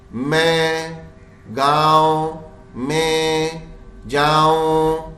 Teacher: نون کی آواز کہیں نہیں ہے غننے کی آواز بن رہی ہے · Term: نون غنّے